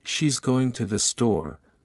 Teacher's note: in she's going to the store, going and store are stressed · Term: sentence stress